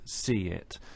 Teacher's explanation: a linking Y sound between C and it see it and these linking sounds simply make it easier to · In a phrase such as see it, we can hear a linking y sound between see and it